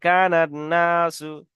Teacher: তারপর দেখেন যদি আলিফ ও লাম হরফে শামসির প্রথমে আসে, আলিফ লাম হরফে শামসির প্রথমে যদি আসে, তাহলে আলিফ এবং লাম উভয়কে বাদ দিয়ে হরফে শামসির সাথে মিলিয়ে পড়তে হয়